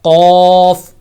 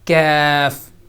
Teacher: جو قوف ہے وہ موٹا کر کے پر کر کے پڑھا جاتا ہے، اور جو دوسرا بغیر نقطوں والا کاف ہے اس کو باریک کر کے پڑھا جائے گا۔ قوف اور کیف، قوف اور کیف۔